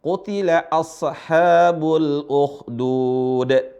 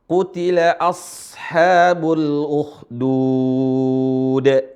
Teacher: Yang benar bukan qalqalah sodnya, yang benar adalah sodnya dialirin suaranya atau rakhawah.